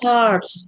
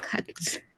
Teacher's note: karena kan dia logat British ya, R-nya jadi nggak dibaca